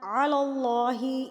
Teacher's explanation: وَيَقُولُونَ عَلَى اللَّهِ، یہاں پر اللہ پر پڑھا جائے گا کیونکہ اللہ سے پہلے زبر آ گیا ہے، اللہ سے پہلے زبر ہوگی تو اللہ پر یعنی کہ موٹا پڑھا جائے گا